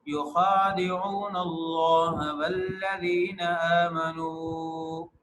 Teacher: لیکن جب لفظ اللہ کی لام آتی ہے تو لفظ اللہ کی لام کو پر پڑھتے ہیں.